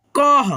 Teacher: जैसे यहाँ पे देखिएगा क और क के आगे 2 विसर्ग, और 2 विसर्ग को हम लोग ह के रूप में उच्चारण करते हैं